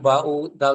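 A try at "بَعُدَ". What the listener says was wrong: আইনের উচ্চারণটা একটু সুন্দর করে বলেন আর একটু।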